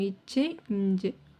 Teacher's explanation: நாவின் இடைப்பகுதியும் நடு அன்னமும் சேர்த்து தான் வந்து உச்சரிக்கிறோம்.